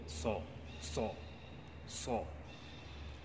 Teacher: jadi dimajukan bibir itu sehingga timbul bunyi o